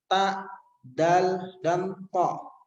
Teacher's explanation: Dan kemudian ketika bertemu dengan ujung lidahnya bertemu dengan pangkal gigi seri yang atas, di bawah gusi akan keluar 3 huruf.